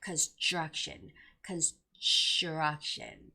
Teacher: Construction also has that TR sound there. So even if like TR sound is in the middle, you have to make that ch sound. So it's got to be construction.